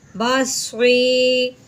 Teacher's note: با زبر با، صاد یا زیر صی، بصری۔ سی نہیں کریں گے کیونکہ صاد اس کو موٹا کریں گے، اگر نیچے زیر بھی ہے۔